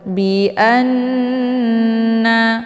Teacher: Cara bacanya, hamzahnya dileburkan ke dalam huruf nun sambil ditahan sehingga terbentuk suara yang mendengung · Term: ghunnah musyaddadah